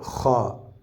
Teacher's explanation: خا میں تھوڑی کھکارنے کی آواز آئے گی